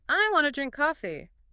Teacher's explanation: your auditory cortex lit up on the two words that were stressed. Drink and coffee.